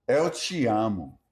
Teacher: Unstressed TE sounds like chi.